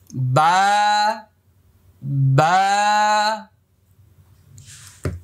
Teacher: বা এক আলিফ পরিমাণ লম্বা হবে, মুখটা খালি ফাঁকা হবে